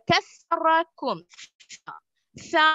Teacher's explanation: அதன் மஹ்ரஜ் நாவின் நுனியும் முன் பற்களும் தொட வேண்டும்